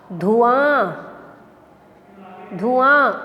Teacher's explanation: आ पे आ रही है चंद्रबिंदु की आवाज़